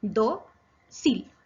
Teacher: Es grave porque su acento está en la penúltima sílaba, do, y lleva tilde porque termina en la consonante L.